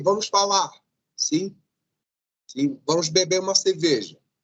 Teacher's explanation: a supressão do R geralmente quando vocês estão utilizando os verbos